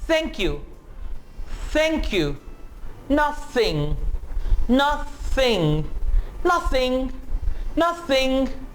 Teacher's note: तो ये जो वॉइसलेस th साउंड है इसको आप एस्पिरेटेड भी कहेंगे।